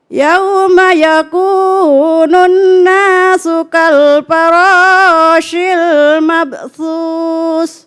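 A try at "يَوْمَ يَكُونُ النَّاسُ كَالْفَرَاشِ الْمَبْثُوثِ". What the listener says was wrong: Oke, udah bagus ini bacaannya. Cuma nanti lebih distabilin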